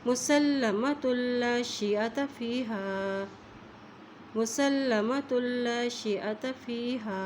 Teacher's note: ता की तो पेश को लाम के साथ मिला रहे हैं क्योंकि लाम के ऊपर शद है